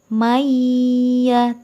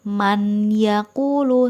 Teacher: satu huruf dari ya Nun mim wow maka dibaca dengan dengung dikatakan dengung karena ketika membacanya tidak bisa terlepas dari suara hidung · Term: Idgham Bighunnah